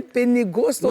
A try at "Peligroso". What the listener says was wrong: Pourquoi c'est pas Penny? Répète, c'est Peli. Voilà, Peligroso.